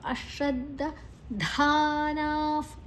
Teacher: ನಾ ದೀರ್ಘ ನಾ ಆದ ನಂತರ ವಿಸರ್ಗದ ಉಚ್ಚಾರಣೆ ಫ್